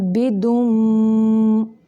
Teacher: یہاں پہ میم مشدد کا غنہ ناک کی جڑ سے نکالیں گے